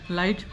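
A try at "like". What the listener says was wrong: लाइट नहीं लाइक,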